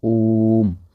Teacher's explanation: एक ओ को लगभग लगभग 3 बार उच्चारित कर रहे हो। इतना टाइम ले रहे हो कि जितना 3 ओ को बोलने में लग रहा है। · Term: प्लुत स्वर